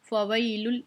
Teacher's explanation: फ़वैलुल, ये याय लीन आ गई है, या साकिन है, इससे पहले ज़बर है तो याय लीन है, हम इसको खींचेंगे नहीं बल्कि बिल्कुल आराम से पढ़ेंगे